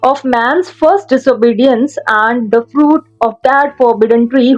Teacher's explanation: Each line comprises 5 sets of iambs, 1 weak syllable followed by 1 strong. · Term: iambic पेंटामीटर